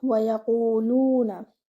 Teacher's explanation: You will circle your lips for the letter Waw and you will have to give it one count because it is just with a fatha. The Ya should be given one count.